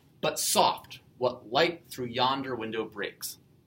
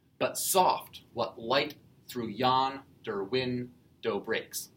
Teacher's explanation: 10 syllables. And every second syllable is the stressed or the emphasized syllable. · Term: iambic pentameter